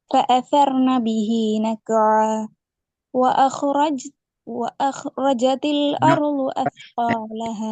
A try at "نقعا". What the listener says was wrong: நக்குஆ நிப்பாட்டுறதுக்கு இல்ல, அதை சரியா பூர்ணப்படுத்துங்க. நக்குஆ பூர்ணப்படுத்தி நிப்பாட்டுங்க.